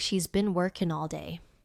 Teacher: Notice how been becomes been, and working drops the final G, so it becomes workin'.